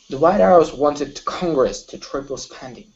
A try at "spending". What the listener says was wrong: less pressure okay on your hes okay so you're really pushing on your hes okay so for example on spending you're saying spending okay relax a little bit on on the vowels